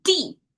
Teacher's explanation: Here it has a tone and it's a fallen tone.